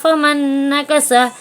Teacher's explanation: یہاں نون ساکن کے بعد نون آیا ہے تو نون کو نون سے ملا کر غنے کے ساتھ پڑھیں گے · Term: ادغام